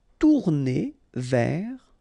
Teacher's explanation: Final S not pronounced